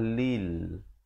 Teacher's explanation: Lam dari bawah bunyi li. Ramai orang baca le.